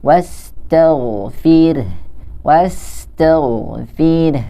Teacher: ketika ada huruf gha yang sukun atau yang mati, dia tidak dibaca dengan memantul.